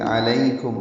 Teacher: کاف باریک ہے، میم ساکن پہ اظہار شفوی ہے